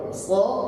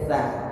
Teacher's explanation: Satu di belakang, satu di depan. So itu pangkal lidah yang bermain, sa itu ujung lidah yang bermain. Sa itu berat untuk disebut, tidak seringan sin.